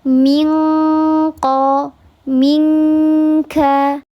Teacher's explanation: Kalau ikhfa hakiki yang ab'ad karena dia letak huruf qof dan kaf ini letaknya di pangkal lidah dekat dengan khaisyum. Bunyikan nun sukun di huruf qof dan huruf kaf sehingga dia pasti bacaannya eng karena terhalang. Minqo minkam sudah bergabung.